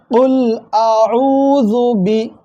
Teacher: நல்லா அடி தொண்டையிலிருந்து உச்சரித்து குல் என்று சொல்லணும் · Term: காஃப்